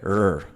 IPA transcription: ɹ